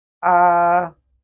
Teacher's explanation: it is pronounced with the upper range of our normal speaking voice. Just like when you go to the hospital and the doctor asks you, ah, to open your mouth. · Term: first tone